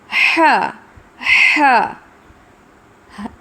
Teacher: اس کا اخراج حلق کے درمیانی حصے سے ہوتا ہے اور اس میں بہت زیادہ ایئر فلو ہوتا ہے